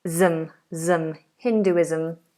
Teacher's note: Again, another Z sound. Most of the time when you have ISM at the end, it's going to be sounded as a Z.